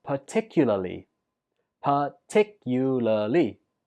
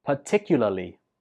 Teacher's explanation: Stress goes on the 2nd syllable.